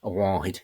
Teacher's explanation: notice the nasal vowel that he has there, because M-H or M-shave is a nasal consonant.